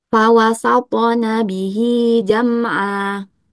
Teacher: Di sini ada ain dengan harokat fathah tanwin. Jadi cara membacanya itu dibaca panjang dua harokat.